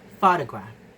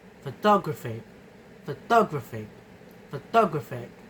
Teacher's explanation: The stress dramatically shifts from the first syllable, ph, to the third syllable, gra. The suffix ig causes a major change in stress placement, moving it from the beginning to the end.